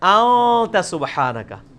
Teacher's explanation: خفی کر کے پڑھ رہے ہیں، نون پورا واضح نہیں کر رہے، ان نہیں پڑھ رہے، پڑھ رہے ہیں. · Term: اخفا